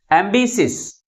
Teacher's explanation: Second syllable is pronounced with a greater force comparing with other syllables. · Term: primary stress